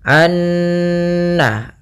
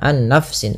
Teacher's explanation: kita harus membacanya nunnya masukkan ke Nun kedua dan disertai dengan gunah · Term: bacaan ID